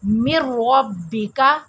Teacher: نون کی آواز ہم نے نہیں نکالنی، لکھنے میں آئے گا، پڑھنے میں یہ ساکت ہو جائے گا، میم کو ڈائریکٹ ہم نے رے کے ساتھ ملانا ہے ، پھر ہمارا یہ تلفظ صحیح ہوگا۔ اگر ہم اسے پڑھیں